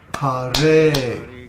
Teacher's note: ha in Hare is a short syllable, but the re is a long syllable because the vowel is a.